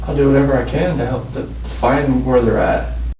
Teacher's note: He stresses can and at, which linguistically restricts his ability or desire to help. This doesn't sound like a man who's willing to do whatever he can, even though on a lexical level, this is the expression he uses.